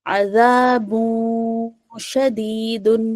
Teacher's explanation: نون کو جو ہے ہم نے چھپا لیا اپنے ناک میں۔ زبان ہمارا جب ہم نہ کہتے ہیں تو زبان ہمارا تالو میں ٹچ ہوتا ہے نا، تو ہم اس کو تالو میں ٹچ نہیں کریں گے، ٹچ ہونے سے پہلے روک لیں گے، اور نیکسٹ لیٹر ہمارا ش ہے تو عذابوں اور ش کی طرف ہم مائل ہو جائیں گے، ٹھیک ہے۔ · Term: اخفا